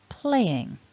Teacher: it becomes a two-syllable word and what you want to do is stress the first syllable so that play should be stronger than the in playing and